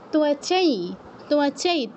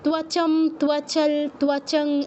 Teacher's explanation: অনুস্বারের পর যদি ইয় থাকে, অনুস্বারের জায়গায় ইয়ের মতো সাউন্ড হবে